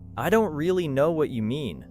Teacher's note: Maybe the speaker stresses really, know, and mean.